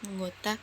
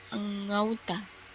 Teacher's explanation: Perubahan bunyi ini terjadi pada bunyi vokal tunggal O ke vokal rangkap AU. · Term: diftongisasi